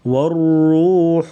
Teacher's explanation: را کو پر پڑیں گے موٹا، اور ہا گلے سے ادا کریں گے باریک آواز